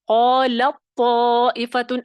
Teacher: تا کی آواز باریک ہے اور طا کی موٹی ہے، تو آپ کو اس میں باریکی کہیں نہیں سنائی دے گی · تا کا طا میں اس طرح ادغام ہوا ہے کہ تا کی اپنی ساؤنڈ ختم ہو گئی ہے، آپ کو صرف جو ہے وہ پر جو آواز ہے وہ سنائی دے گی، طا غالب آ جائے گا.